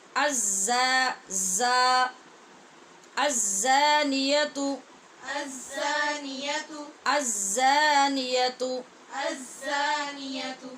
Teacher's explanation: زانی ٹھیک پڑھ رہے آپ، زا پہ سیٹی کی آواز پیدا کریں اور شد کی صورت میں اور زیادہ شدت بھی پیدا کریں